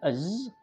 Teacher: Bunyi az, voiced, alveolar, fricative. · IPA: [z]